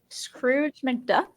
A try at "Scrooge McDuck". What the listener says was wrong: It sounds like you're saying Scrooge or Duck.